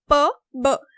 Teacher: when you say p, when you say b, both of your lips are being used. So then this is bilabial.